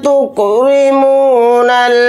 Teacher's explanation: रा के नीचे ज़ेर है तो रा को यहाँ पर बारीक पढ़ेंगे, मोटा नहीं पढ़ेंगे